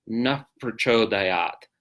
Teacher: Bilabial fricative, nuf, right? And it's easy to pronounce actually because it flows right into the following consonant, because the following consonant is a P. So naf prachodayat. · It's very similar to an F sound, except not using your teeth. You're only using your lips.